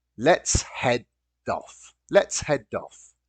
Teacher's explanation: notice that the D at the end of head joins the particle.